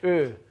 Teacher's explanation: there is a front mid-rounded vowel